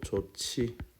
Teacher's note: 히읗과 지읒이 만나서 치읓으로 되는 축약 현상이죠